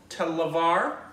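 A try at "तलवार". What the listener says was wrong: There's no I in there.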